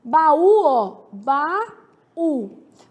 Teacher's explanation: Quando eu pergunto quanto à tonicidade, baú é oxítona, porque tem como sílaba tônica a última